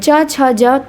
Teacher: च छ ज तालव्य है।